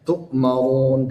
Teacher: Kemudian dia di akhir kalimat tadi ya, maka dia berhenti di situ dan berlaku hukum mad arid lisukun panjang ya, boleh sampai 6 harakat · ra ya yang berharakat dhammah di situ, maka dia ditebalkan. Hukumnya adalah tafkhim ya.